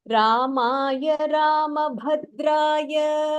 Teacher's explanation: So in this Bhadraya, the Bha is Mahapranaha, where you have to stress